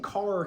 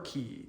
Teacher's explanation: when you say car, your tongue is more towards the back of your mouth, but when you say key, it's more towards the front? And well, that's because that K sound was palatalized by that E vowel.